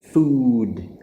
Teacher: problem is the long ooh sound versus the short sound so in the word food we want to put our lips really forward really round and make an ooh sound